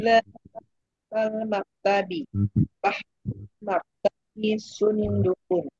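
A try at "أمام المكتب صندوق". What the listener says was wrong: Panjang pendeknya Bu.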